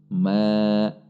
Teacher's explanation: Di sini ada huruf mim berharokat fathah berdiri. Mad tabi'i dibaca panjang 2 ketuk. Ma, perhatikan tidak terlalu panjang.